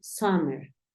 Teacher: como si tu intención fuese decir una a pero terminas diciendo una o